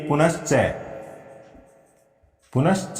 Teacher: विसर्ग के सामने च होने से इस विसर्ग का क्या हो जाएगा, इस विसर्ग के स्थान पर तालव्य श व्यंजन हो जाएगा